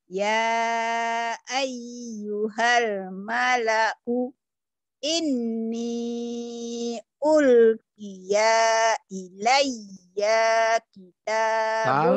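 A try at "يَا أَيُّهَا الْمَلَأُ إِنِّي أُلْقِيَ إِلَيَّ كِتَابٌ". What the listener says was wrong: Salah. Panjang pendeknya salah.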